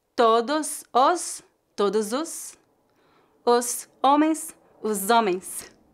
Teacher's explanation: como a letra h é muda foneticamente a palavra homens começa com a vogal o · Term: ligações